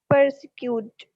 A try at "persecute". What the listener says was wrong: So the R here is silent. We don't read that sound. Persecute. Not per. It's just per. Persecute.